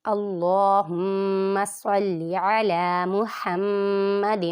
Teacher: اللہ کے لام سے پہلے زبر ہے، اللہ کے لام کو پر پڑھیں گے اور کھڑی حرکات ہونے کی وجہ سے اسے لمبا کریں گے.